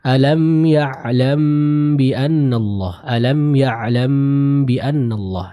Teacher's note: cukup ditahan dengan menutup bibir kita secara sempurna dengan kadar 2 harokat